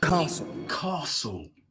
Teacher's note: the T there is not pronounced